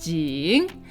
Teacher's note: the third tone is technically down and then up